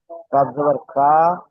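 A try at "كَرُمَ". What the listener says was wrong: কাপ জাবার কা বলে টান দিচ্ছেন, কাপ অক্ষরটি টান হবে, কা টান হবে না, উচ্চারণটি টান হবে না। কাপ জাবার কা। কা টান হয়ে যাচ্ছে, কারুমা হয়ে যাচ্ছে, কারুমা। ঠিক এমন স্পিডে বলতে হবে। কাপ জাবার কা, র পেশ রু, কারু, মিম জাবার মা, কারুমা।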